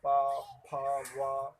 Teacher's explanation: ये ओंठ से टकराती, ओंठ आपस में टकराते हैं, पा, फा, वा, इस तरीके से, इसलिए हम ओष्ठ ध्वनि कहते हैं इसे।